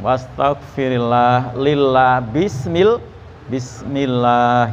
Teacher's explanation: Itu disebut lafdzul jalalah. Ketika didahului oleh kasroh, maka dibaca tarqiq. Tarqiq atau murokok. Baca tipis.